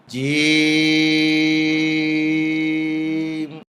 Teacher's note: জিহ্বার মাঝখান উপরের তালোতে উঠবে শক্ত সবল আওয়াজ হবে